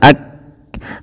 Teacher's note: Syiddah itu artinya tertahannya suara ak. Nah, berhenti kan kayak tertahan suara ak.